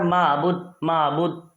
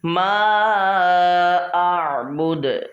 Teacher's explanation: ہم نے اس کو میم کو لانگ کرنا ہے اور حمزہ کو عین سے ملانا ہے